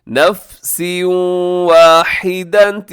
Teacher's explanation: تنوین کے بعد واو آ جائے تو کیا کرتے ہیں جی؟ یہاں پہ ادغام کرتے ہیں۔